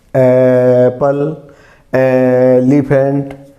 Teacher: जब स्टार्ट किया तो ना हमारे होंठ मिले और ना हमारी जबान मिली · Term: स्वर